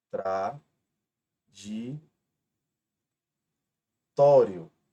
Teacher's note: Então vocês podem perceber que a penúltima é a mais forte e é uma palavra terminada em ditongo e não terminada em O. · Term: paroxítona terminada em ditongo